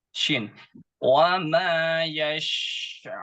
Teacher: shin itu dia udara memenuhi mulut kita, jadi mengalir gitu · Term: huruf shin